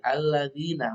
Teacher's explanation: Alladzina ada kasrah, bertemu dengan ya mati alladzina, maka harus dibaca dengan panjang, namanya mat tabi'i.